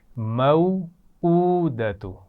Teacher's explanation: حمزہ کے اوپر الٹا پیش ہے تو اس کو کھینچ کر پڑھنا ہے